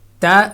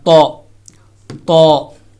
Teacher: اسی طرح تو، تا اور تو کا مخرج ایک ہی ہے، لیکن اس میں فرق صرف اتنا ہے کہ تا کو باریک انداز میں پڑھا جاتا ہے اور تو کو موٹے انداز میں پر کر کے پڑھا جاتا ہے